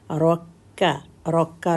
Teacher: تشدید کی وجہ سے تھوڑا سا کاف کو ہولڈ کرنا ہے